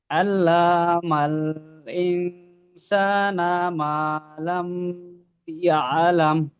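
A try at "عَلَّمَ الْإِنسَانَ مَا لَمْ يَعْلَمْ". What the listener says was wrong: মিমটা টান হবে না। আল্লামাল, আল্লামাল ইনসানা।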